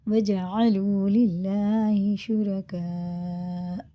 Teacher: مد متصل ہے، حمزہ آ رہا ہے اس کے بعد، 5 الف پہ برابر کھینچ کے پڑھیں گے